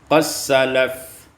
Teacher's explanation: diidghamkan dal pada sin menjadi qas salaf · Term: idghamud dal fi sin